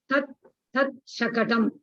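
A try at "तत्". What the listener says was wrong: Not tad. T-A-T, not T-A-D.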